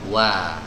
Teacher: huruf wawu ini adalah huruf yang keluar dari dua bibir tapi dikumpulkan, dimajukan. Ya, dalam kondisi apapun huruf wawu ini bibirnya harus dimonyongkan.